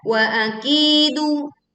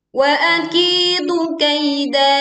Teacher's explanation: kita panjangkan ki 2 harokat. Kaida, lalu ya lin dibaca dengan lembut, kemudian da dibaca panjang 2 harokat.